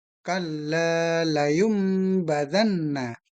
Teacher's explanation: mengubah atau membalikkan bunyi nun mati ataupun tanwin menjadi mim mati bila dengan huruf ba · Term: iqlab, iklab